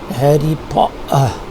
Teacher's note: as if there is no T, and instead of this T we have the glottal stop